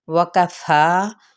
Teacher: فا پہ مد اصلی بالالف کا قائم مقام ہے، ایک الف یا 2 حرکت لمبا